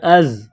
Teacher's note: اس کے بعد زا، زا کے اوپر جزم کا نشان ہے تو حمزہ اور زا کو آپس میں ملائیں گے، زا میں سیٹی کی آواز پیدا کریں گے